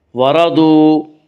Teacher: وا مدہ وہ ایک الف کے برابر کھینچ کر پڑھیں گے